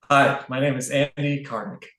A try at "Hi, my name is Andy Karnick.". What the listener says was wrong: Just slightly. not all the way to the back of your head.